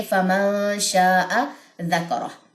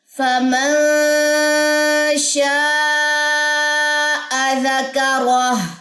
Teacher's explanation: غنہ ہوگا. اور کیونکہ یہاں پہ ہمارے پاس اخفاء حقیقی ہے شین کی وجہ سے یہاں پہ ہم غنہ کریں گے